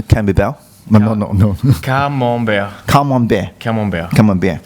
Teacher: you see the T at the end is silent. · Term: Silent letters